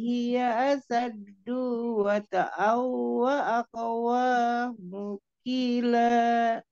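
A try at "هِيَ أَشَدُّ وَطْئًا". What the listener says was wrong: Asyaddu, du-nya pendek, Umi. Asyaddu wa ta'aw. Tanwin ketemu wawunya digunahin dulu. Ifgomi gunah. Ditahan dulu, didengungkan. Asad dua ta'awwa aqwa mukila. Dunya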